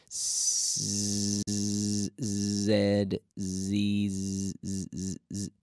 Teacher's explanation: it's almost like an S but we activate the vocal chords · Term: Zed